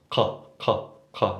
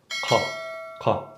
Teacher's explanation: And the qa, basically, it's produced, according to different studies of linguistics and linguists, they'll tell you that the qaf is produced by the uvula and the back of the tongue. So the uvula is the squiggly thing in the back of your throat, the uvula.